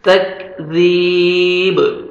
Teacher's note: last میں با حروف قلقلہ میں سے ہے، ڈبل ساؤنڈ آئے گا جب سٹاپ کریں گے تو با ساکن ہو جائے گا